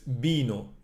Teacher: because we close our lips, we don't say vino with open lips, we close the lips